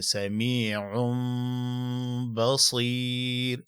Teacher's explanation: سمیع، ګوره دلته په تلفظ کې د دې تنوین اواز چې ورکوي، د تنوین اواز په شان د نون دی. دغه نون دا په میم سره بدلیږي په تلفظ کې، او دغه نون تنوین چې کم دی دا به په با کې پټیږي، او په دې کې به د غنې لحاظ هم کې سمیع بصیر.